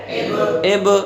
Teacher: جیسے ہم بادا کر رہے ہیں تو با کا مخرج کیا ہے؟ دونوں ہونٹ ہیں، اگر ہم دونوں ہونٹوں کو چپکا کے رکھ دیتے ہیں تو پھر وہ قلقلہ ادا نہیں ہوا۔